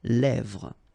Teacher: Same thing here, final S not pronounced, and then this E accent grave here, it gives you the E, really open sound